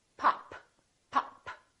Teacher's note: This is a stop because I'm stopping the airflow.